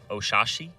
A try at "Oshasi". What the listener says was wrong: There's only one H. Oshasi.